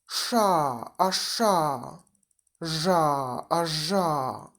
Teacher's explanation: Spółgłoski retrofleksyjne, retroflex, to grupa głosek artykułowana poprzez wywinięcie języka w górę do tyłu.